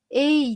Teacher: Дәл қазір сіздер көмейлеріңізді ұстап, яғни мына тамақтарыңызды ұстап, бірге дауысты және дауыссызды айтып көрсеңіздер болады. Дауысты ей деп айтқан кезде мұнда голосовой связка дірілдегенін байқаймыз.